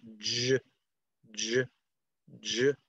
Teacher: It sounds a little bit like a D and a Z. So j, j, j. And it's, notice that it's voiced. Alveopalatal, meaning the tip of your tongue, is a little bit behind the alveolar ridge onto your hard palate.